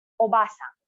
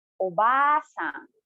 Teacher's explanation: notice how i prolong the ah of the obasan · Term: short and long sounds